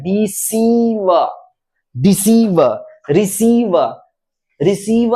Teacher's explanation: डिसीव, डिसीव, रिसीव, रिसीव नहीं है, रिसीव नहीं है, रिसीव नहीं है, रिसीव, सीव। यानी हमें ई की मात्रा पर कुछ समय बिताना होगा ताकि उसका उच्चारण क्या हो जाए, दीर्घ हो जाए, बड़ा हो जाए, लंबा हो जाए